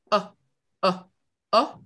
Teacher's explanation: les cordes vocales elles font un petit rassemblement brutale et ça donne oh oh oh si je le vois zh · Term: coups de glotte